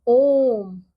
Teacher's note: अब अगला है हमारा प्लुत स्वर। इसके उच्चारण में ह्रस्व की अपेक्षा 3 गुना समय लगता है